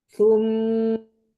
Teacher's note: ujung lidah ada di ujung gigi seri bagian atas ya. Agak dikeluarkan sedikit supaya tidak menyerupai huruf ta atau juga jangan menyerupai huruf sin.